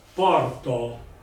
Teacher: noi non pronunciamo una U, ma in effetti pronunciamo una O molto stretta. Allora, se voi ponete le labbra a cul di gallina e dite porto, viene fuori una U.